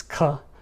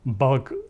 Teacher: Swedish and Norwegian use the aspirated, meaning there's a puff of air, whereas Danish uses the unaspirated form